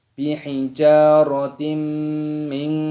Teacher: kasrah tanwin yang bertemu dengan huruf mim, ini hukumnya dibaca idgham bi gunnah, cara dimasukkan dan didengungkan.